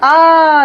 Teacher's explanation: जिसके उच्चारण में मुंह पूरा खुलता है। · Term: विवृत